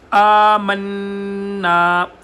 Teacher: کیا جا رہا ہے، یہ کھڑا زبر اس کی وجہ سے، نون کے اوپر غنہ اور پھر نون کو لمبا الف مدہ کی وجہ سے ، والراسخون فی العلم یقولون آمنا بہ، بہ، یہاں پر بہ · ساتھ لگائیں گے تو قاف موٹا ادا ہوگا، یقولون آمنا، آمنا، حمزہ کو لمبا کیا جا رہا ہے، یہ کھڑا زبر اس کی وجہ سے